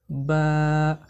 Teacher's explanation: বা হরফকে দুই ঠোঁটের ভিজা থেকে পড়তে হয়